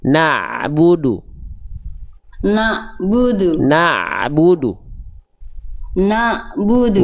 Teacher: Bukan na yang dipanjangkan, tapi ain yang ditekan. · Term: huruf ain